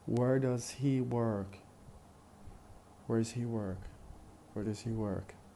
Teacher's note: So does and he are unstressed.